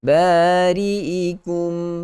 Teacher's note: Bari'ikum faqtulu, mim mati bertemu dengan fa, izhar syafawi. Kena jelaskan sebutan huruf mim tanpa memasukkan ke dalam huruf fa atau mencampur adukkan bunyi fa itu. Mesti solid huruf mim.